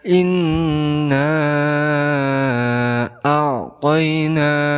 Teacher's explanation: Kemudian setelah itu ada alif, kemudian bertemu hamzah. Inna di sini dihukumi sebagai mad jaiz munfasil karena ada huruf martabai yaitu alif bertemu dengan hamzah di lain kalimat, maka dipanjangkan boleh 2 sampai 6 harokat